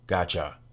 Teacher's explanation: real word it's the combination of two words got and you the ch sound is a result of the t sound gliding into the y sound